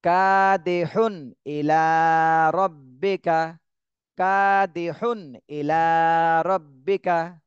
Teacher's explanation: এখানে কোনো গুণনাই করা যাবে না, স্পষ্ট করে পড়তে হবে ইজহার। কাদিহুন ইলা রব্বিকা, কাদিহুন ইলা রব্বিকা।